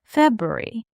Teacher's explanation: it's like we drop that first R.